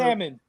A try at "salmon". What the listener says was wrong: L is silent, bro.